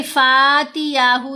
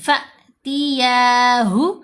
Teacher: اب یہ الف نہیں، حمزہ ساکن ہے. تو جب حمزہ ساکن کے ساتھ کسی بھی آواز کو ملایا جائے گا تو جھٹکا دیا جائے گا، جھرک ہوگا آواز میں